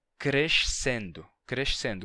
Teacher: Na pronúncia de Lisboa, a gente tem crescendo, com sh. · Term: S chiado